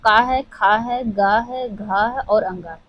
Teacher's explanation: क वर्ग के सभी वर्णों का उच्चारण कंठ से होता है